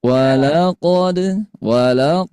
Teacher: Hati-hati ada qalqalah kita pantulkan ayah bunda ya.